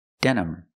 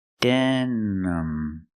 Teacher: I use the schwa sound for the second syllable. It's not stressed. Use the sound relaxed sound.